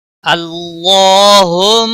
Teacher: اللہ کے لام کو موٹا پڑھیں گے، اس کے اوپر کھڑی زبر ہے، ایک الف کے برابر کھینچ کر پڑھیں گے۔